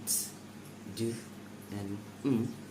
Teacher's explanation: are minus strident because they do not produce that strong friction.